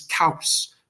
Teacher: The au is a diphthong, which is long. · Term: elision